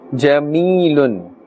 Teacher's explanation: Meem is pronounced from the dry part of the lips.